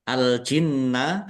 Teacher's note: Al-jinna alif lam komariah ditandai lamnya dibaca sukun. Nun tasdid dibaca ghunah atau mendengung ditahan biar tampak mendengungnya